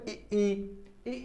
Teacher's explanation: अगर तालब की बात करें तो ई अगर बोलेंगे तो जो ध्वनि निकल रही है ये हमारे तालु से, जो तालु है यहाँ से निकल रही है, इसलिए हमको इसके तालब कहते हैं।